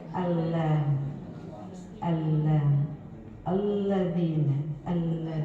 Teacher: ujung lidahnya bukan di langit langit bapak ibu tapi digigi